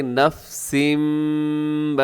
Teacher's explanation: کلو آگے نفسم، نفسن تنوین کے بعد میم ہے تو یہاں بھی کیا ہوگا، ادغام غنے کے ساتھ